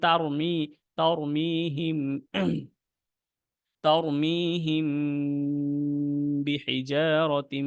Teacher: যখন এখানে মিম সাকিনের পর বাটা আসছে, সেজন্য আমাদের দুই আলিফ টানটা হয়েছে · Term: গুণনা